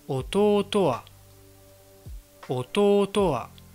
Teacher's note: dans Odaka, il n'y a pas de retombée pendant le mot, mais juste à la fin du mot. C'est-à-dire que le mot là qui va venir après le mot, immédiatement après le mot, et en général ça va être une particule, cette particule va avoir un mot là qui va être bas.